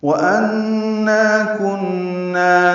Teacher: انا نون مشدد پہ غنہ اور نا الف مدہ، کن نون مشدد پہ غنہ یہ واجب ہیں